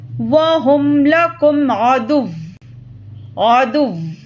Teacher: جب واو پر تشدید ہو تو اس پر سختی کر کے رک جائیں گے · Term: واو مشددہ